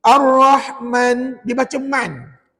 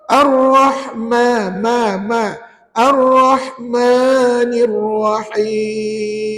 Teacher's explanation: Pastikan ma tu betul-betul 2 harakat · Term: mad asli